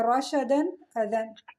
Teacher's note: دو زبر کی تنوین کے بعد حروف حلقی کا حمزہ آ رہا ہے تو ہم نون تنوین کو اظہار کر کے پڑھیں گے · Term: اظہار حلقی